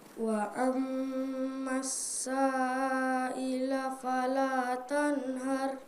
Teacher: mim tasyid ya dibaca selama dua ketukan